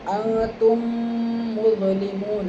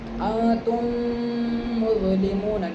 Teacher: دیکھو خالی ہونٹ ملیں گے، انتم، نہ دانت ملے گا، نہ دانت ملیں گے، نہ زبان ملے گی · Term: ادغام شفوی